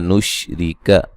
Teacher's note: नुशरिक रा को बारीक पढ़ा जाएगा